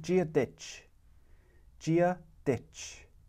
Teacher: you'll notice that first d sound is a j jia the last d sound d is our normal d ditch